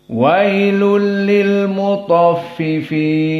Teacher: Maksudnya idgham dimasukkan tanwin kepada lam sehingga tidak ada bacaan wailun, lunnya tidak ada, tapi lul.